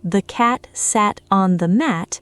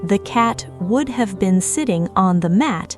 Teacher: Both sentences, she explained, take roughly the same amount of time to say aloud because both have only 2 strong stresses. All the extra function words in the second sentence get compressed and rushed to fit inside the same rhythmic space. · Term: stress-timed